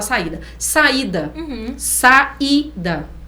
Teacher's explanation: o a e o i são vogais tem que ficar em sílabas separadas isso é o iato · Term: hiato